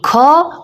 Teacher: तो ख अघोष महाप्राण ध्वनि है